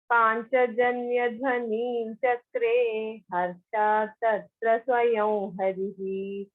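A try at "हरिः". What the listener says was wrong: Harihi, no, not harihi, not dirgha. Harihi, dhasva.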